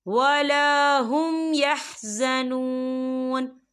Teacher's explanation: تو یہاں پر اظہار شفوی ہو رہا ہے اور ہم یہاں غنہ نہیں کریں گے، ہم اسے بنا غننے کے پڑھیں گے.